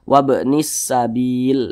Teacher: Jadi huruf lamnya ini tidak dibaca, langsung masuk ke huruf sin. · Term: idgham